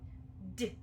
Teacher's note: if you notice then a quick bit of air comes out of my mouth